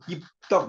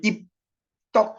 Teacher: 여러분 입덕 이렇게 발음을 해보면 폐쇄가 열리면서 공기가 방출되지 않죠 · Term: 불파음